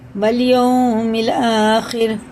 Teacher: واو ساکن سے پہلے زبر ہے تو جلدی پڑھیں گے اسے، یہ حرف لین ہے